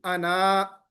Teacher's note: انا پر وقف آپ کریں گے تو آپ الف کو واضح کریں گے